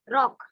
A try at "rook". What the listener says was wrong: Rock. It's not called rock. It's R-O-O-K. Rook. What do we say? Rook. It's R-O-O-K. Rook. Rook. Like that we say rook.